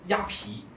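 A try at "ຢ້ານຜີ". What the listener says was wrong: 烟 不 是 鸭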